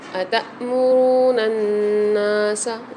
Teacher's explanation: نون کے اوپر مشدد آ رہی ہے آگے تو یہاں پر نون کو کھینچ کے بھی پڑھیں گے اور غنہ کر کے بھی پڑھیں گے